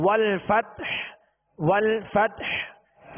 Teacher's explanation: آگے والفتح، والفتح یعنی ہا پر ہم نے سانس توڑ دیا، آواز اور سانس توڑ دیا اور وقف کیا ہم نے ہا کو ساکن کرنا ہے، لہذا ہا پر ہی اختتام ہوگا. ہا ساکنہ پر آواز اور سانس کا اختتام ہوگا